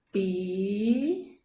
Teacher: A sílaba forte é tão. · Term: sílaba tônica